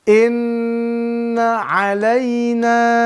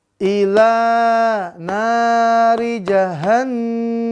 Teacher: Di nun bertasydidnya kita dengungkan 2-3 harokat.